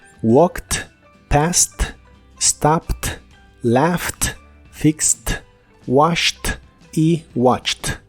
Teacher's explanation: El verbo watch, que en el presente termina con el sonido y letras CH, en el pasado es watched. En todos ellos la terminación ED se pronuncia como T.